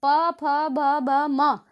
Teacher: ये ओष्ठ होठों की सहायता से बोले जाते हैं।